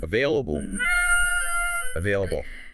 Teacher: the V sound there, where your top teeth touch your bottom lip.